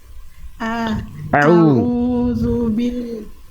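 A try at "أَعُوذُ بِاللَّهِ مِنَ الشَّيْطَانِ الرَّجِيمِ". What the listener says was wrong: A'udzu. Jadi jelas mana hamzah kerasa makhraj. Jadi kalau tadi au itu nggak jelas. A'udzu.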